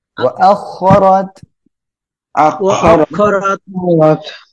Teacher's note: র এর উপরে জবর মোটা করে পড়বেন